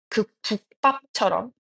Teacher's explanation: 첫 번째로 받침, 기역, 디귿, 비읍 뒤에 연결되는 기역, 디귿, 비읍, 시옷, 지읒의 된소리대기입니다. 예를 들면 국밥처럼 앞에 오는 기역 받침 때문에 뒤에 오는 비읍의 소리가 쌍비읍으로 바뀌는 것이죠.